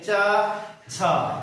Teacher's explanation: च, छ, ज ये सब आपके तालव्य वर्ग के हैं और तालु से इसका उच्चारण होते हैं